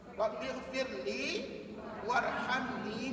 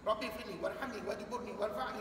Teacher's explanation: harakatnya mesti dua di hujung-hujung bacaan